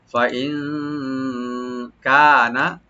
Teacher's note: নুন সাকিন এখানে আমরা ইখফা করব, এখানে লাইট গুন্না। ফাইন কানা কাপটাকে ওপেন রেখে খালি টানবেন, নুনে কোনো টান নাই লাস্টে, টানলে কিন্তু মিনিংটা চেঞ্জ হয়ে যাবে।